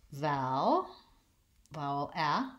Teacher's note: first syllable stress that's the long syllable